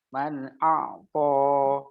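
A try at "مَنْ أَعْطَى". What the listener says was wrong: To-nya jangan terlalu panjang, cukup 2. Man a'ta.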